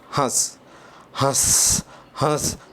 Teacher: आधी हवा नाक से निकल रही है और आधी हवा मुख से निकल रही है। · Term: अनुनासिक